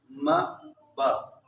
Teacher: ہونٹ مل رہے ہیں، یہی اس کا مخرج ہے